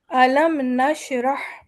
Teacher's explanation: یہاں پر ہم صرف اظہار کریں گے میم کا۔